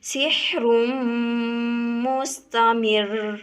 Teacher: اور اسی طرح اگر ہمارے پاس را ہے اور اس کے اوپر شد ہے تو اس کو ہم اس طرح ادا کریں گے سحر مستمر۔ را کے اوپر شد کو جب سختی سے ادا کیا جاتا ہے تو زبان میں تھوڑا سا راشا سا محسوس ہوتا ہے